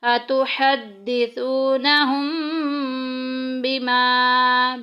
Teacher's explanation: میم ساکن کے بعد اگر با آ جائے گا تو اخفاء شفی ہوگا، غنہ کر کے پڑھیں گے۔ اتحدثونہم بما، بما میں دیکھیں الف پیچھے زبر، الف مدہ کا قاعدہ جاری ہو رہا ہے، 1 الف کے برابر لمبا کریں گے۔